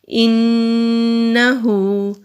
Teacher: ہا کے اوپر الٹا پیش ہے تو الٹا پیش کو بھی ایک الف کے برابر کھینچ کر پڑھا جاتا ہے · کانا کاف کے اوپر زبر ہے، باریک کاف ہے، باریک ادا کریں گے۔ الف سے پہلے زبر ہے تو الف مدہ ہے، ایک الف کے برابر لمبا کریں گے۔